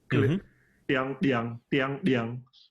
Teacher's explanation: the linguists call it glottal stop, which is a little click at the glottal parts